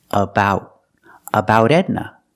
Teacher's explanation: We see the T in about is between vowels. So that T changes to a fast D too.